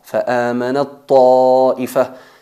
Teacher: En estos ejemplos, pues, fusionamos la primera, que tiene que tener la condición de ser muda, con sukun, sin vocal, en la otra, y se convierte en la segunda letra reduplicada. El ta se fusiona en la ta y al pronunciarlo pronunciamos una ta enfatizada. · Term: idgham al-mutajanisain